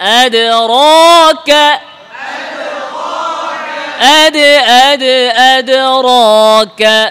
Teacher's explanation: দালে আওয়াজ, দালে থামা যাবে না। আদ র আলাদা না।